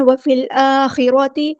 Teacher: ہم نے ادغام کرتے ہوئے 2 کاؤنٹ رکنا ہے، وفی الآخرۃ فا کو ہم نے لام کے ساتھ ملا دینا، حمزۃ الوصل ہمارا ڈراپ ہو جائے گا